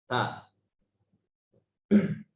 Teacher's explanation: Harus tegas. Ta. Jadi sekali sentuh huruf itu selesai. Gitu ya. Tidak berbunyi lagi. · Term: syiddah